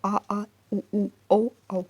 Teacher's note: जिह्वा के पीछे वाले भाग से जो उच्चारित होते हैं उन्हें हम पश्च स्वर कहते हैं